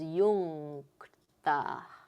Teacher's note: So this is first varga, kantya, the guttural, and so this is first position nga.